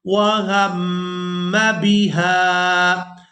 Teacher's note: میم مشدد پر غنہ کریں گے، آواز ناک میں جائے گی اور اس آواز کو کچھ دیر ناک میں رو کر رکھیں گے۔